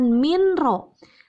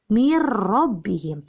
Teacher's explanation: karena ada nun mati bertemu ro Bagaimana cara membacanya cara membacanya n-nya dilebur tapi langsung masuk ke huruf idgham nya